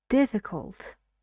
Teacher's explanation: So 3 syllables and diff is stressed in this word.